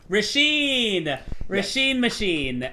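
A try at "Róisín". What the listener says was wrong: So it's actually Roisin. A lot of Americans say Rasheen, but it's Roisin. the accent on the O makes you really pronounce that like it's separate. Roisin, like Roisin Murphy. Roisin.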